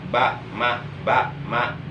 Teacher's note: Karena ba dan mim itu masih berdekatan. Baik huruf ba maupun huruf mim itu min sapataini, tempat keluar hurufnya dari kedua bibir.